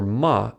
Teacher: For ma, air is redirected to the nose.